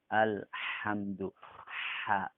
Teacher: Dia harus dibaca dengan huruf ha, yang huruf ha tersebut keluarnya dari tengah-tengah tenggorokan.